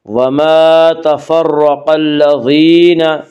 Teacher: وما تفرق الذین، یا مدہ وہ یا جو ساکن ہو اس سے پہلے زیر ہو، یا مدہ کو ایک الف کے برابر کھینچ کر پڑھیں گے